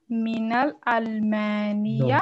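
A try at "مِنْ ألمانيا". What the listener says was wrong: No, it is not mina, it is min. Here we will not join them, they are separate Because of hamza.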